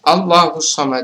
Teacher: bukan karena ee sukun asli kemudian allahus Somad allahus Somad adalah hukum Bacanya adalah takhim atau tebal karena lafaz Allah didahului oleh huruf Hija berharakat fathah